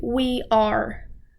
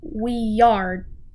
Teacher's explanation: we're going to place the y sound in between words that have the first words ending in a high vowel.